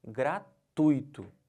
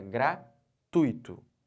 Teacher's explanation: Eu estou botando toda essa sílaba aqui, ó, o tui, como sílaba tônica.